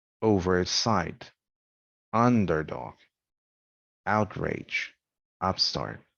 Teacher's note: the prefix has primary stress the noun has secondary stress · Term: prepositional prefixes